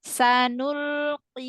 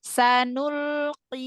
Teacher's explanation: Karena dia tafhimnya tingkatan terakhir. Jadi paling tipis dia huruf qaf yang kasroh. Ya, walaupun tetap nggak boleh kayak huruf kaf, tetapi dia nggak tebal, nggak koi, nggak ya.